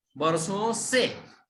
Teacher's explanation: बरसो म्हणजे नुसतं नाकातून त्याचा अनुनासिक उच्चार करायचा